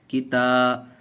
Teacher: ہم نے یہاں کھینچ کر پڑھا اس لیے کہ الف مدہ ہے، الف سے پہلے زبر ہے